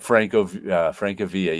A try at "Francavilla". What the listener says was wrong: Francavilla. It's Italian. It's not Villa.